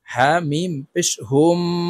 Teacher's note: তাশদি মিমের সাথে গুন্নার সহিত পড়তে হবে